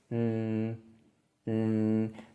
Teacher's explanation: this word is It's tricky in a couple of ways first it has a retroflex nasal consonant this is made with the tip of the tongue curling back and touching the hard palate